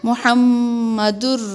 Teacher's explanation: دال، را، پیش، در کہتے وقت بالکل ناک میں آواز نہیں جاتی، اسی کو کہتے ہیں ادغام بلا غنہ